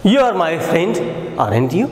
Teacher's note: The speakers use falling tone when he has to just seek an agreement. Remember, When the question tag is used by using a falling tone, the intention of the speaker is just to seek an agreement. Remember, question tag, when it is used in falling tone, its objective is to seek agreement. · While asking or seeking agreement, the speaker generally use falling tone. The speakers use falling tone when he has to just seek an agreement.